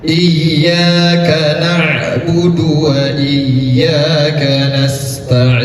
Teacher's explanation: Mat'arid lis-sukun, boleh dibaca dengan panjang 2 harkat, 4 harkat, maupun 6 harkat.